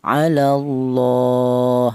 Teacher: Kemudian di sini ada alallahi di sini ada lam jalalah ini di mana di atas lam jalalah ini ada harakat berdiri ini menunjukkan bahwa cara bacanya itu dipanjangkan satu alif atau dua harakat atau dua ketukan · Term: mad thaabi'i